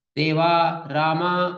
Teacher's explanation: तो अ का और आ का स्थान तो कंठ है पर आ का विवृत है और अ का समृत है तो